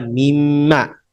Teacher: Ma itu Min Plus Ma digabung mim Ma nunnya hilang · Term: melebur jadi satu